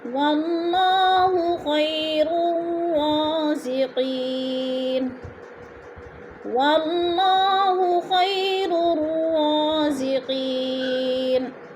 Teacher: یا ساکن سے پہلے خواہ کے اوپر زبر ہے تو یالین کو لمبا بھی نہیں کرنا اور جھٹکا بھی نہیں دینا